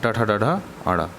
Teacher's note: मूर्धन्य व्यंजन वे होते हैं जिनका उच्चारण करते समय वायु मूर्धा से निकलती है, माने मुंह के ऊपरी भाग के अग्रभाग से। इसमें ट वर्ग आते हैं, ट ठ ड ढ अड़।